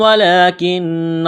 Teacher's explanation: کاف کو باریک کرنا ہے، نون کے ساتھ پلس کرنا ہے، نون مشدد ہے، غنہ کریں گے، آواز ناک میں چھپائیں گے